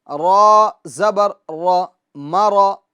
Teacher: را کو پور کریں گے کیونکہ را پر زبر ہے